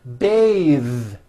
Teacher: when you change it into a verb to bathe the vowel changes to an a sound and the th is voiced